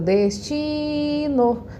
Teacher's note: Então, qual que é a minha sílaba tônica? O ti. Então, ó, eu circulo a palavra mais grandona e circulo a sílaba tônica mais pequenininha.